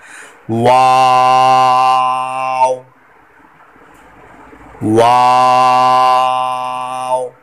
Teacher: वाव, इसमें होंठों को गोल कर पढ़ना है, क्योंकि ये जो वाव है ये होंठों की गोलाई से अदा होता है, होंठों को गोल करना है।